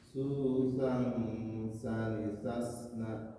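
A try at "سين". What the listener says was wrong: Bapak kalau lihat ke huruf sin, jadi susang. Kalau Bapak tadi susang, tapi harusnya kalau Bapak tadi kurang menempel ujung lidahnya. Kalau tidak menempel huruf sin, susan sanisasna, karena berada di tengah-tengah lidah.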